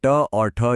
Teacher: मूर्धन्य ध्वनियों के लिए जीभ थोड़ा पीछे की ओर मुड़कर मुंह की छत को छूती है, जैसे कोई जिम्नास्ट हो।